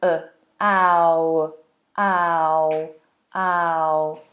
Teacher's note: We're doing ow, ow. So it starts with an ah, very wide open forward sound, ah, and ending with an ow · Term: diphthong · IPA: /aʊ/